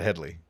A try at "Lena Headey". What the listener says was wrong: No, it's Heady. No L.